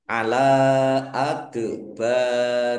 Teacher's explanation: Dal sukun bacaan qalqalah dibaca memantul ditampakkan pantulannya. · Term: kolkolah